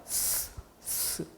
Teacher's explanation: 그러면은 이 혀 끝에 공기가 흘러가면서 스치는 이 소리가 날 거예요. 그게 바로 마찰입니다.